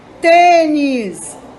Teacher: O tem é a sílaba mais forte.